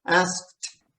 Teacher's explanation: Now that's an unusual one because the K and the T, there's nothing in between.